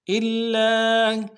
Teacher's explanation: لام کے اوپر تشدید ہے، زور دیں گے، اور لام کے ساتھ الف مدہ ہے، ایک الف میں کھینچیں گے۔